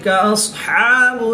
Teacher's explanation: صاد حروف مستعلیہ میں سے ہے تو اس کو پورا یعنی موٹا پڑھیں گے